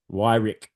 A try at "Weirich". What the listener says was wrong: It's Weirich, and there's no W in German. It's a V sound, and it's I. Yeah, like EI is I, and then Rick.